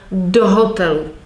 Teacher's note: some preposition attracts the stress from the following word.